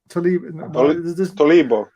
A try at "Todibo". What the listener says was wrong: There's no L in it, so how do you get Tolibo out of that? Todibo. Unless you spelt it wrong.